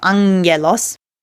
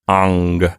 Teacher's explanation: So a hard G is like G, like the G in golf. But if you have two gammas together, the first one gets nasalized, and so it's like ang, something like that.